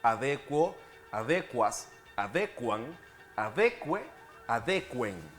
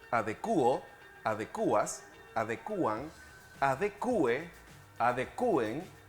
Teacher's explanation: en todas estas formas conservan el diptongo y no se acentúa.